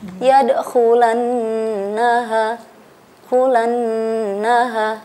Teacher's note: Yadkhulannaha, di situ ada nun tasydid. Nah, dan nun tasydid disebut dengan wajibul gunnah. Wajibul gunnah, wajib dengung. Jadi kita cara membacanya itu ditahan 2 harokat atau 1 kali ayunan.